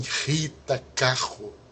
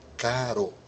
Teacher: O R é sempre pronunciado de maneira fraca, e nunca é gutural como em Rita, carro, mas ele é como na palavra caro. o R brando.